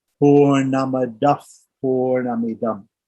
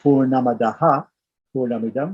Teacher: when one of these visargas comes before a P or a PH, the visarga itself has a slight F sound. For example, purnamadaf, purnamidam.